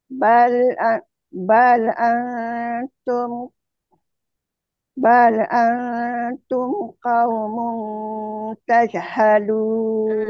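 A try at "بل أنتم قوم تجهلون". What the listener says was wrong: Ha dia ada putus-putus sikit kat situ. Buat sambung aje dan sempurnakan huruf-huruf tu sifat.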